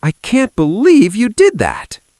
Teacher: The stress was on did, the pitch was high.